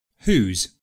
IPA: uːz